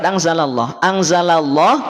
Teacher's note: ketika ada lafaz Allah sebelumnya ada tanda fathah ya Ada harakat fathah maka lafaz Allah menjadi tebal